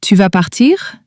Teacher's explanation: With a rising tone, meaning you're going to leave?